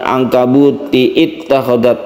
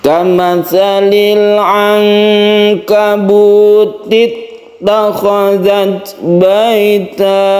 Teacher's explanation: Kalau ketika wasol atau terus, maka i-nya ini tidak dibaca karena dia hamzah wasol.